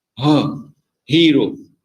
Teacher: produced by restricting the airflow through the open glottis